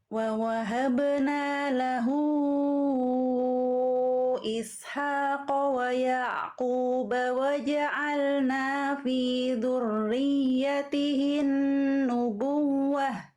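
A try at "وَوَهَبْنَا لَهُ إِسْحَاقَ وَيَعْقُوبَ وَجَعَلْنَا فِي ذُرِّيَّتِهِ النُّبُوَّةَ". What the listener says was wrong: Bagus, Masya Allah.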